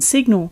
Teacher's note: In signal, the I shifts to a short I, and we can hear a G in this two-syllable word.